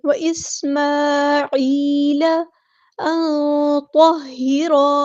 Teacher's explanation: نون ساکن کی آواز کو ہم یہاں چھپا دیں گے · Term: اخفا